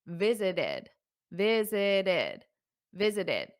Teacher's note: you add that extra syllable that's because the word visit ends in a t if the word ends in a t or a d